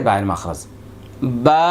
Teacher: দুই ঠোঁটের ভেজা জায়গা হতে একটি হরফ উচ্চারিত হবে · ভেজা জায়গা ভিতরের অংশ থেকে, স্বাভাবিক যখন মানুষের মুখ বন্ধ রাখে, এটাই বায়ের মাখরাজ,